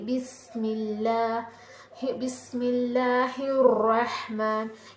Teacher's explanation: سین جو ہے اس میں وزل کی آواز یعنی کہ سیٹی کی آواز آتی ہے جب ہم اس سین کا استعمال کرتے ہیں۔